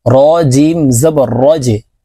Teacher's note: জিম কলকলার হরফ নিচের দিকে ধাবিত করে ধাক্কা দিয়ে উচ্চারণ করব।